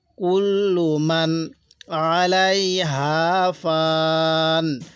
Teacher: কুল্লু মান, এখানে নুনের মধ্যে গুণনা করব না, স্পষ্ট করে পড়ব